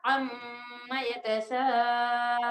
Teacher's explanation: جب سٹاپ کریں گے تو نون سائلنٹ ہو جائے گا